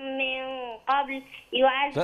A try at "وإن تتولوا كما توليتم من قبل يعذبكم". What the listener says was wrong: أوصليها. وإن تتولوا وإن تتولوا يعذبكم. لا، مفيش من قبل. من قبل مش عليها وقف اوصليها. وإن تتولوا كما توليتم من قبل يعذبكم.